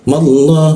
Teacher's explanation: Jangan monyong karena di Arab hanya ada a i u. Jadi mulutnya a tapi keluarnya o. Dia madah hu masuk ke bawah tenggorokkan hu seperti itu.